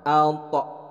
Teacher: bukan ato, tapi to-nya ada pantulan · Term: qalqalah